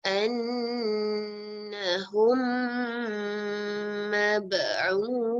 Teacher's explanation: Say the second mim sound yang ada bersabdu, sound with gunnah for 2 beats. With lips tightly closed. Jadi mim, oleh kerana kita sebut mim tu mulut kita ni kena tutup mim gitu kan.